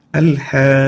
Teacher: This is a compulsory med, dark red color, and an elongation, compulsory elongation for 6 units